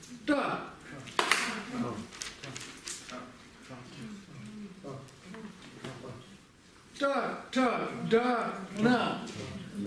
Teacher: Кончик нашего языка упирается в верхнюю часть неба за альвеолами. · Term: ретрофлексные